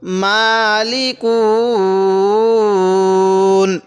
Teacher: যদি আমরা এখন ওয়াকফ করি তাহলে কিভাবে পড়বো মালিকুন তখন এখানে আমরা তিন আলিফ টান দিবলাম